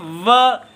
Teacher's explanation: नीचे का जो ओष्ठ है और ऊपर ऊपर के दांत ये स्पर्श करते हैं। इसलिए वकार का स्थान दंत ओष्ठ कहा गया है।